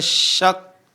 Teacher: ikhfa itu sudah berada di makhraj shin, tempat keluar shin. Yaitu di mana tengah lisan bertemu dengan langit-langit. Syak. Jadi udah mengarah ke makhraj huruf shin.